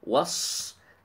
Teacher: the صاد heavy, and it has hams as well